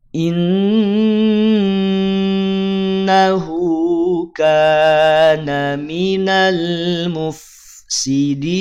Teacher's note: Inna ada nun bertasydid, maka tahan 2 harokat.